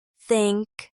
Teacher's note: For the voiceless TH, as in think, there's no vibration.